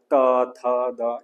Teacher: જીભનું ટેરવું દાંતને અડે છે · જીભનું ટેરું દાંતને અડે છે. જીભનું ટેળું દાંતને અડે છે ત થ દ એમાં જીભનું ટેળું દાંતને અળે છે. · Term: દંતવ્ય